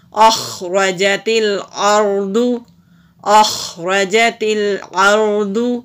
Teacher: خا حروف حلقی ہے تو حلق سے نکال دیں گے